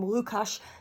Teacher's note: Certainly the name Łukasz starts with a dark L and not a clear one.